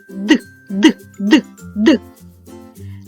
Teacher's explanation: і я чула твердий звук д